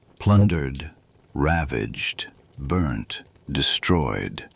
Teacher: each one a single strong stress on the first syllable, a kind of drumbeat